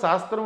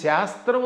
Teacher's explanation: శకి స కి తేడా తెలియదు వాడికి స అనేది దంత్యం శ అనేది తాలవ్యం